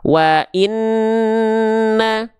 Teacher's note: Namanya ghunah hukum tajwidnya ya dibacanya dengung dua harakat